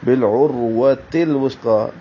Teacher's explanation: عروہ عین وسط حلق سے